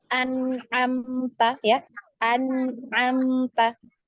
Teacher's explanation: maka nunnya atau tanwinnya ini dibaca jelas satu harokat, ya, jangan dipanjangkan, satu harokat. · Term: izhar halqi